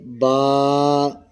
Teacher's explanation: با دونوں ہونٹوں کی اندرونی تری کے ملنے سے